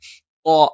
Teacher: നാവിന്റെ അറ്റത്തിന്റെ മുകൾഭാഗം ആ മേലെ മുൻബല്ലിന്റെ മോണയിൽ സ്പർശിക്കുകയും നാവിന്റെ മധ്യഭാഗം മുകളിലേക്ക് ഉയരുകയും ചെയ്യും